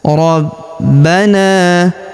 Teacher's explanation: Huruf ba kita tahan dan kita tekan karena terdapat tanda tasydid di atasnya.